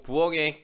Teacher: 부엌의 키읔 같은 경우에도 기역으로 발음난다는 거죠